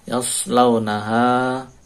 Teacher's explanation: yas launaha shadnya tebal yas tidak yas tapi yas dinaikkan lidahnya